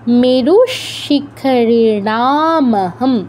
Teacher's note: আমরা বিসর্গ উচ্চারণটা তালব্য হসন্ত করবো